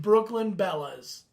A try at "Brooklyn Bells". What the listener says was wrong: No, Bells. Not Bellas.